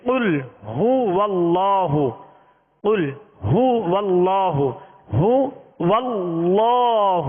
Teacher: ہا کا پیش اس کو دراز بھی نہیں کرنا، ہونٹوں کو گول بھی کرنا ہے، ہا کو واضح ادا کرنا ہے